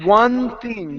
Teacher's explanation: Your tongue is in the same place. With the N and the TH, you can connect these sounds.